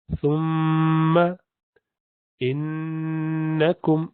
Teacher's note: دیکھیں میم مشدد پہ بھی غنہ ہوا، نون مشدد پہ بھی غنہ ہمیشہ ہوتا ہے، اس میں کوئی استثناء نہیں ہے.